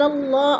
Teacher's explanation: اللہ سے پہلے لفظ لام کے اوپر زبر ہے تو اللہ کو پر کر کے پڑھیں گے